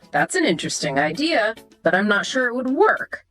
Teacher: That slight rise on work hints at your doubt.